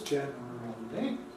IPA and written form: ˡʤen ər əl i (generally)